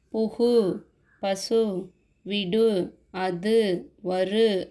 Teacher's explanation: அடுத்தது வந்து முற்றியலுகரம். ஸோ தனிக்குறள் எழுத்தை அடுத்து வரும் வல்லின உகரங்கள் ஒரு மாத்திரை அளவுக்கு முழுமையாக ஒலிக்கும்.